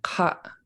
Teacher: so you glottalize the end of it